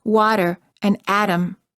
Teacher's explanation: Sometimes the T sounds more like a D